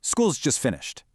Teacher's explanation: If it's just a boring statement of fact, it gets a falling tone.